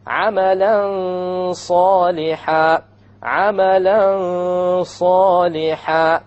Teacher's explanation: You hide the nun behind the sad and you have a ghunnah.